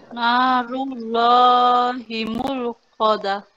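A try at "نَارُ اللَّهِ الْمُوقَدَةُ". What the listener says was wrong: Itu ada lam di situ, langsung narullahil ya. Ya, kalau dipisah memang betul narullahi al-muqadah, tapi kalau disambung ya hil langsung ke haknya langsung ke lam qamariyah, lam sakinahnya itu. Narullahil muqadah.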